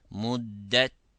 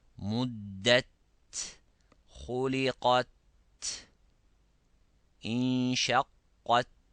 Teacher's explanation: Muddat instead of muddat. Look, the ta has a sound of stopping. You stops the sound first, it has a shidda, then the air flows after it. Muddat. To bring that, we have to press hardly on the gums, on the tip of the tongue behind the incisors.